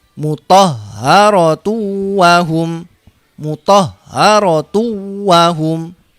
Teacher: Tidak dibaca mutahharatun wahum, tapi dimasukkan tunnya ini, dhamma tanwinnya masuk ke wawu. Jadi di sini dibaca dhamma biasa, dimasukkan ke sini. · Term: idgham bi gunnah